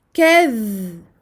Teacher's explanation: Donc ici on aura donc le dhal, on lui donne son temps d'écoulement du son